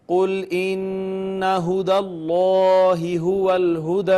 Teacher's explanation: جلالت کا ما قبل مفتوح ہے لہٰذا اس کو مفخم پڑھیں گے